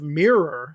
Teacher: saying it really strong with that second syllable, that's more British English than it is American English